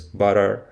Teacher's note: in American English, you can pronounce this word as butter with a flap in the middle and the sonorant r at the end